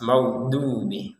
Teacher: Huruf dot ini maghdubi itu bukan seperti huruf dal. Kalau dal itu di ujung lidah, kalau dot ini di sisi kanan atau sisi kiri atau dua-duanya itu menyentuh kepada gigi atas.